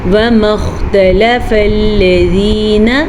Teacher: نہ تو ہم واؤ کو لمبا کر سکتے ہیں، نہ ہم میم کو لمبا کر سکتے ہیں، اور نہ ہی ہم تا لام فا کو لمبا کر سکتے ہیں کیونکہ سب کے اوپر زبر ہیں۔